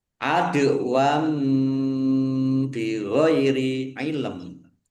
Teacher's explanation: Dal sukun bacaan kolkolah dibaca memantul, ditampakkan pantulannya.